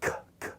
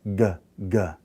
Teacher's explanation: But if I say a guttural voiced, g, g, g, see, I can hear the vibration, right? So they're both gutturals because I'm using that soft palate in the back of my throat, the velum.